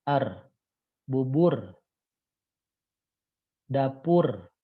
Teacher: sampai Hai seperti bergetarnya ketika kita mengucapkan huruf r Ya beda kalau huruf r tuh getarannya banyak dan lepas dan er bubur dapur begitu tapi kalau huruf lo ini getarannya